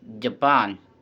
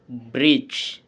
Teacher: voiced post alveolar or palatal, and affricates begins like a the and releases into a th sound.